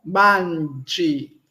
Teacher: Não nasalizamos. Por quê? Porque todas as letras devem ser pronunciadas. Quando nós nasalizamos no português, deixamos de pronunciar as letras.